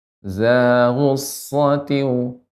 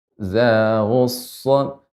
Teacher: shad di sini tasydid sehingga kita berikan banyak ya hamasnya dan juga rokhawahnya. Za ghussatin dan tebal isti'la.